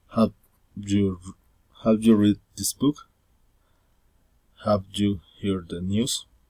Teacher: General question, rising intonation.